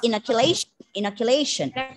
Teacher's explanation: stress on the penultimate syllable and bring down the schwa bring down the vowel sound to the schwa